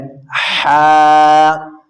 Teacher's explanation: आपने हलक के दरमियान वाले हिस्से से निकालनी है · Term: हरूफ हलक